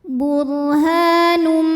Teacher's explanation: maka tanwin dimasukkan ke mim